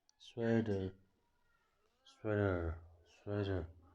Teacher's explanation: in American English, that T is going to change to a D, like the word better